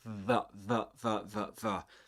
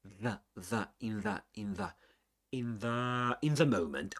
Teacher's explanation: So you say vv-v, but the other is a dental sound because you produce it only using your tongue and the upper front teeth.